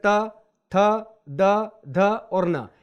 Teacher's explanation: ये वर्ण बोलते समय हमारी जिह्वा जो है हमारे दांतों को छूती है, इसलिए इन्हें दंत्य वर्ण कहते हैं।